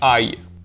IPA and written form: ɑɪ̯ (ay)